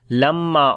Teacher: كلا لما يقضي ما أمره Kalla, kaf we read in light sound and lam we long due to alif madda. Lamma, on the meme there is shadda sign, we make gunna and also we long due to alif madda.